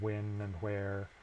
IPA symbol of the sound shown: w